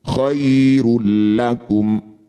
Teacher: Dumah tanwin bertemu lam disebut idgham bila ghunah. Bunyi dumah tanwin masuk pada lam tidak usah dengung. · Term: idgham bila gunnah